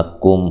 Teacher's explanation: کم، کاف کو باریک، میم ساکن کا اظہار ہے، یہاں غنہ نہیں کیا جائے گا